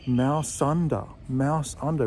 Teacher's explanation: Mouse finishes with an S sound, and the next word is under, which starts with the vowel sound